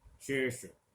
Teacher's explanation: ये ऊष्म तो दोनों ही है, लेकिन वहां पर मूर्धा से जाकर हल्का सा वहां टकराहट होती है जीभ की, और वहां से वायु रगड़ खाकर निकलती है